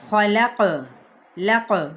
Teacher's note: یہ قاف پہ ساکن ہے تو قلقلہ کیا جائے گا. اسی طرح اس قاف پہ بھی قلقلہ.